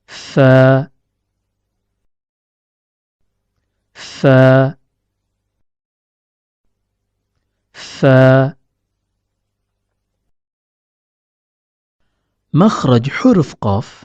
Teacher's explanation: huruf Fa keluar dari pertemuan antara ujung gigi seri atas dengan bagian dalam bibir bawah